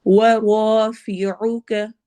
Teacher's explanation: واو میں ہونٹ گول ہوں گے